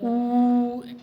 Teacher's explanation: त्रिमात्रिक उ जिसको प्लुत बोलते हैं, जो उच्चारण में जिसको सर्वाधिक समय लगता है, वह उ ऐसे करके उसकी प्लुत संज्ञा हो जाएगी।